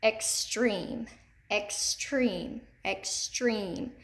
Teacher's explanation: here okay so you're going to put extreme under second syllable it's accented in the second syllable